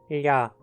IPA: ʎa